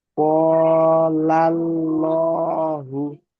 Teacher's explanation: আল্লাহ শব্দের আগে, আল্লাহ শব্দের আগে যাবার এসেছে, আল্লাহর নাম পুর করে পড়তে হবে, অর্থাৎ ল উচ্চারণ করে পড়তে হবে